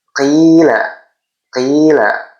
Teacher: Cara bacanya sama dipanjangkan dua harakat atau satu ayunan atau satu alif. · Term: mad thobi'i